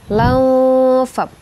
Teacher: Lau dia samar ke huruf fa. Jadi teman-teman bacanya bukan lang ya, tapi dia samar ke huruf fa-nya.